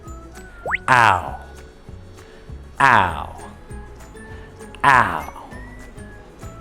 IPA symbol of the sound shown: aʊ